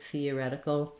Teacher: First of all, the first TH sound is the voiceless TH. So you don't want th, but rather theoretical.